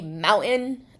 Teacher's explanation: in the word mountain, it'll be mountain like 15% of the time, which is with a glottal stop